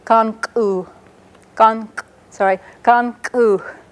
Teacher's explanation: They're all written with an apostrophe, and they have that little catch in the voice. · a plain K and then a glottalized K, and it's pronounced kan-ku.